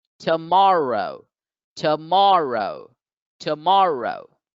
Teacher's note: here the second syllable has the stress mark the apostrophe so the second syllable gets accented it gets stressed it gets elongated